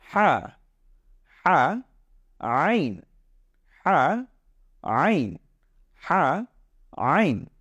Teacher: এই দুইটা হরফের উচ্চারণ কিন্তু ঠিক গলার কণ্ঠনালীর মাঝ বরাবর থেকে আসবে, একেবারে ভেতর থেকে আসবে। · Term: কণ্ঠনালীর মাঝখান থেকেই